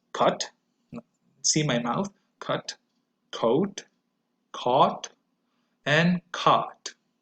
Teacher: notice how my mouth opens wider as I progress to the pronunciation of these four sounds